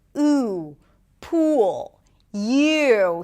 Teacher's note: The tense oo sound, I think of it like the cousins, the back cousins of the sheep vowel pair, because one is tense, oo, pool, you. Here the back of the tongue goes up, it's really high up in the back. The lips round, it is a longer sound,